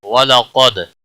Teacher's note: قاف حروف مستعلیہ میں سے پر پڑھا جائے گا، دال ساکن پر قلقلہ ہوگا